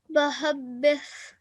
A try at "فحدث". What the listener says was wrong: This is a fa, okay? Even a ba has got one dot, but the fa, the appearance of it is a bit different. فحدث.